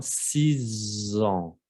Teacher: A pesar que es una X, se va a pronunciar Z, como si fuera una Z. Z, ¿ok? Tiene que vibrar, ¿eh? 6 ans, ¿ok? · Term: liaison